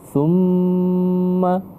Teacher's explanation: Jadi kedua bibirnya harus tertutup dengan ditekan selama 2 harakat. Summa, jadi huruf ma. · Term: wajibul gunnah